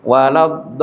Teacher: Lamnya memang tasdid, cukup ditasdid, kemudian dilepas. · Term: lam tasydid